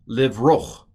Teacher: to get from O to ch, you have to stick a little A in there. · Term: furtive patak